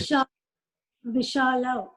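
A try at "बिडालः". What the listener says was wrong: It is Bidalo. Why Sha? It is Da. Bidalo.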